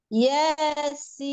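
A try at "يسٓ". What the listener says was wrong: Jangan ambil ancang-ancang harokatnya. Ya, langsung. Yasi, ya, jangan, ya, jangan deh Ayun. Ya, ingat-ingat, jangan deh Ayun harokatnya. Ya, jadi ingat-ingat tadi jangan mengayun harokat, jangan apa namanya mengambil ancang-ancang setiap huruf ya, langsung huruf sifatul huruf harokat berbarengan keluarnya ya.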